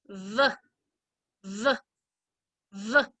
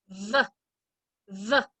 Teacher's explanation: When I make the sound of V, my bottom lip goes up and touches my top teeth. V, V. My tongue stays down in my mouth.